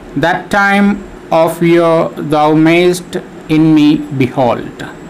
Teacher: in the line so we have five feet in this line in the case of the first foot we have two syllables the first syllable is unstressed and the second syllable is stressed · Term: iambic pentameter